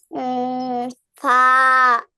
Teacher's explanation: নিচের ঠোঁটের পেট সামনের উপরের 2 দাঁতের আগার সঙ্গে লাগাইয়া